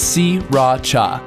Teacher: don't bother paying attention to that first R si Racha three separate syllables okay you try si Racha alright